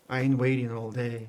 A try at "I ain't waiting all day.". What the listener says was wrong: There we go. Very nice.